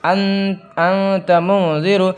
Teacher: ہم نون کی آواز کو ظاہر نہیں کریں گے بلکہ ناک میں گنگنا کے پڑھیں گے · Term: اخفا